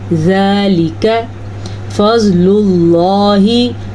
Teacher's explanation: زواد کو ہم نے پر پڑھنا ہے کیونکہ زواد حروف مستعلیہ میں سے ہے۔ · لفظ اللہ کو ہم نے پر پڑھنا ہے کیونکہ لفظ اللہ سے پہلے پیش ہے۔